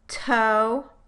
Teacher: the t and stow toe versus sto can you hear how there's an extra puff of air after the release of the stop in tow this extra puff of air does not occur after the tu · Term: aspiration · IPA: /t/